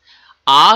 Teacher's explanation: আ যখন উচ্চারণ করো তখন জীব সেন্ট্রালে থাকে। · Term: সেন্ট্রাল ভাওয়েল